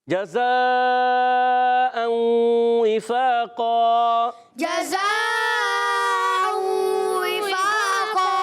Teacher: اوں تنوین کے بعد واو، پھر ادغام مع الغنہ ہوگا. وفاقا وقف کرنے میں دو زبر کی تنوین کو الف سے بدل دیں گے، اس کو کہتے ہیں وقف بالابدال عال الف ہو جائے گا.